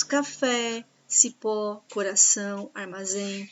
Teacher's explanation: Cipó coração Armazém essas palavras nós chamamos elas de palavras oxítonas porque a última sílaba é mais forte